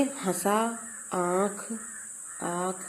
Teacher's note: इसका उच्चारण करते समय हवा नाक और मुख दोनों से निकलती है। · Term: अनुनासिक